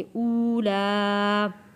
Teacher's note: واو ساکن سے پہلے پیش ہے تو یہاں ہم ایک الف کے برابر اسے کھینچ کر پڑھیں گے